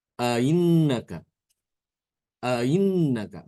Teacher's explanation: Jadi hamzahnya tidak jelas dibaca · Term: tashil